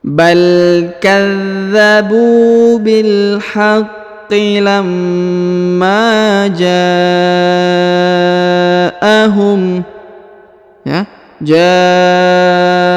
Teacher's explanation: huruf ja dipanjangkan 5 harokat karena di atasnya terdapat tanda bacaan panjang 5 harokat